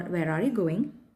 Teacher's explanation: see the voice Falls at the end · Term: falling tone